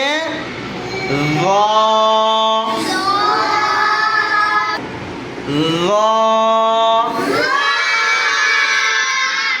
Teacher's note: জিহ্বার আগা সামনের উপরের দুই দাঁতের আগার সঙ্গে লাগিয়ে